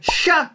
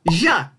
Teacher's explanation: If the S-H sound is gonna make a 'sh' sound (which is voiceless), then the voiced Z with the letter H are gonna make a 'zh' sound.